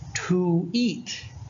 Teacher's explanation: It's only pronounced oo if it's before a vowel, such as to eat.